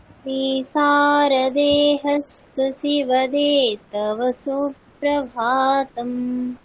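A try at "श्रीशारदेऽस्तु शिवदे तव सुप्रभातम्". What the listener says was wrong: আচ্ছা, এখানে শ্রী শারদে হস্তু নেই, ওখানে যে হটা আছে ওটা একটু আর কি টাইপিং মিস্টেক, ওটা হচ্ছে লুপ্ত আকার। ঠিক আছে, যেমন আমরা বাংলা স্ক্রিপ্টে যেমন দেখি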